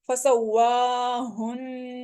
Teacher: نون مشدد ہے، اس کے اوپر غنہ کریں گے. ہا حروف حلقی میں سے ہے لیکن یہ حلق کے آخری حصے سینے کی طرف سے پڑھا جاتا ہے، تھوڑی سی آواز موٹی ہوتی ہے اس کی.